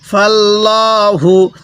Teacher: যখন আল্লাহ শব্দের লামের পূর্বে জবর দেখব তখন আমরা আল্লাহ শব্দের লামটিকে পোর করে পড়ব, অর্থাৎ মোটা করে পড়ব।